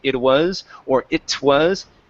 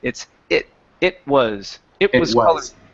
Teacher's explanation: we're actually going to use a stop T instead of a normal T or a flap T